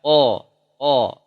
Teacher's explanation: Qa tebal, ketebalan isti'la, tidak sampai itbaq. Ya, dari pangkal lidah bertemu dengan langit-langit. Ya, qa. Tidak keluar napas. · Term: qaf